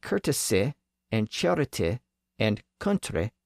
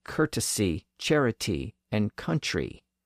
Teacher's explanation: completely separate process was at work on those French lone words the short I sound at the end was being stretched out to e